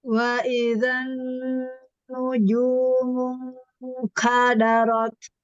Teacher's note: terus menahan nun tasdid itu jangan sampai suaranya hilang ya